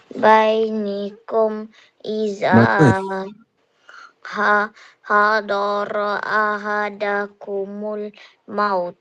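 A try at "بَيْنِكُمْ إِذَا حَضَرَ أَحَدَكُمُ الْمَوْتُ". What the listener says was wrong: Bagus. Masya-Allah. Bagus. Very good.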